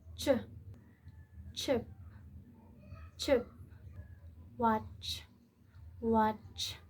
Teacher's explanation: A voiceless post-alveolar affricate begins as the t, releases into sh, forming the typical ch sound.